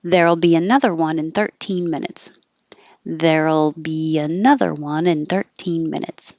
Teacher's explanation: However, if you want 13 to really stand out as a teen, you can put the stress on teen in 13 minutes. But because I'm stressing 13 minutes, I'm going to start high and keep going down